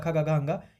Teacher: जो क वर्ग होता है यानी क ख गघ अंग ये बोला जाता है आपका कंठ से